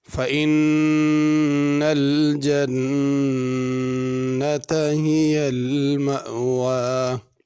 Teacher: اِنَّا کے نون پہ غنہ ہے، جنت کے نون پہ غنہ ہے